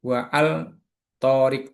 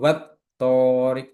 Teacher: alif lam tidak dibaca dan huruf setelahnya dikasih tasjid. Ya, di hukumnya tadi idgham samsiah dilebur ke huruf berikutnya. · Yang pertama adalah ketika huruf ta yaitu dibaca was torik, bukan wa al torik tapi wat torik, jadi langsung masuk kepada huruf to.